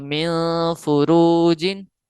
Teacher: ناک کے بانسے میں نون ساکن کی آواز کو لے کر جانا، یعنی ظاہر کر کے نہیں پڑھنا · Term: غنہ